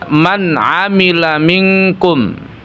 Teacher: Jadi bertemu dengan ain maka nunnya, nun sukunnya harus jelas. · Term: izhar